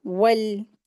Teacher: वाव को होठ को गोल करके हम पढ़ेंगे वल, ठीक है? लेकिन लाम की आवाज़ पलटेंगे नहीं। बहुत से लोग इस पे गलती करते वल्ले वल्ले पढ़ते हैं, तो ऐसा गलत तरीका है।